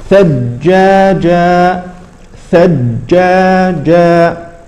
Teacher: هذه الجيم الاولى المشدده لا تقلقل